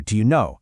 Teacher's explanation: Those two words just melt into one quick sound.